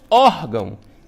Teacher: por mais que tenha aqui, né, esse sinal gráfico til, mas a sílaba tônica mais forte é o OR. Ó, órgão. Então, a penúltima sílaba paroxítona vai receber o acento porque termina em ão, né?